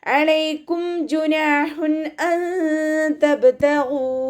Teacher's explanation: ഹ സൗണ്ടിനെ clear ആക്കി കൊടുക്കുക കേട്ടോ. തൊണ്ടയുടെ മധ്യഭാഗത്ത് നിന്ന് തന്നെ കൊണ്ടുവരിക സൗണ്ടിനെ.